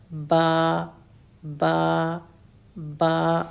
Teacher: دونوں ہونٹ اچھی طرح سے آپس میں ملتے ہیں، فل ہونٹوں کا پارٹ ملتا ہے اور پھر با الگ ہو جاتا ہے. اگر کوئی کہے کہ ہونٹ یوز نہیں کرو اور با کو ادا کرو تو ایسا پوسیبل نہیں ہے.